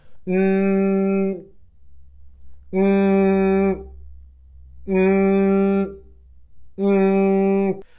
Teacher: both sounds are nasal sounds. They come out your nose. So if I say either sound, n or ng, and I pinch my nose, look what happens.